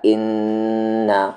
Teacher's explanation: نون پر تشدید ہے یعنی یہاں پر غنہ ہوگا